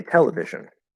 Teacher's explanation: the primary stress, the loudest, biggest stress is on the te